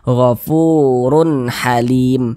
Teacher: Tidak didengungkan sehingga dibaca pendek saja · Karena dia izhar, maka dibaca jelas, tidak berdengung. Dibaca jelas, run terbaca jelas runnya tuh. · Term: izhar halqi